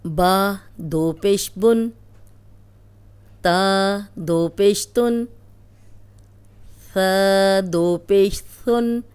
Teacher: اب پیش ہے تو یہ پیش ہے، اس کے ساتھ اب جو دوسرا پیش آیا ہے یہ نون ساکن ہے، ٹھیک ہے، اس لیے نون کی آواز آتی ہے